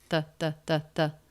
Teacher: links right into the word that we just said really quickly your tongue tip does not need to come through the teeth there that you can just make that by having the tongue forward in the mouth against the backs of the front teeth